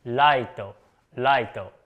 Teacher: the words like: Right And Light They both become, Raito, Raito with the Japanese R